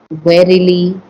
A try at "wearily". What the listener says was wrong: if we said warily, somebody's warily, that's another word altogether. You have to use the ear, weir. You see the ear in that word?